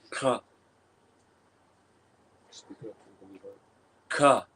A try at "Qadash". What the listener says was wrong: A little more. A little more maybe back of the throat. Because you're not saying K, you're not saying ka, but you're also not just gurgling while you're saying.